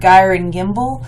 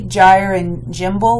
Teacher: if the G's in here, these two words on the second line, are pronounced hard, gyre and gimble, then it's alliterative with brillig, borogoves, and outgrabe